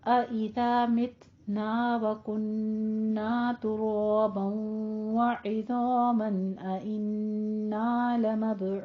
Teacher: रू को भी सू को भी दोनों को 2 काउंट करना है, दोनों होंठ गोल करके अदा कीजिए। और तुराबन में तनवीन के बाद इदगाम अल गुन्ना, इज़ामन अइन्ना में इजहार हल्की करना है, ठीक है।